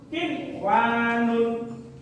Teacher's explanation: Diperhatikan, tegas, bukan kiwanun seperti ketika di luar kalimat, tapi jika di dalam kalimat dibaca jelas. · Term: idgham wajib